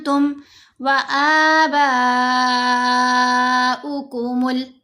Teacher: बा के ऊपर मद मुत्तसिल है, 5 हरकत की मिकदार लंबा · आंतुम व आबाउकुमुल अक़दमून। तुम, नून साकिन के बाद ता है, तो हमने नून की आवाज़ को यहाँ नाक में छुपाया।